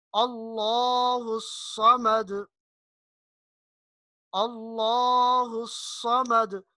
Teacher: لفظ اللہ یہاں اس سے پہلے لام سے پہلے زبر ہے، اس لیے اس کو موٹا پڑھیں گے